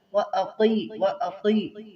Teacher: قاف کو موٹا کریں گے